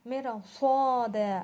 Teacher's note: مر میں ہم را کو باریک پڑھ رہے ہیں کیونکہ رائے ساکنہ سے پہلے اگر زید ہو تو اس کو تھوڑا باریک، اس کو باریک پڑھا جائے گا.